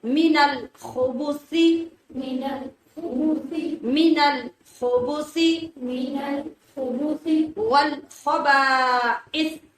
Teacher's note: خا کو موٹا اور رگڑ کی آواز کے ساتھ اور سا کو بغیر سیٹی کی آواز کے نرمی سے، جیسا · الخبث، خا کو موٹا اور رگڑ کی آواز کے ساتھ اور سا کو بغیر سیٹی کی آواز کے نرمی سے